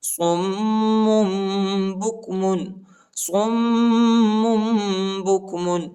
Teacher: یعنی آخر میں جو ہے نون کی آواز نہیں نکالیں گے بلکہ میم کی آواز نکالیں گے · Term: اقلاب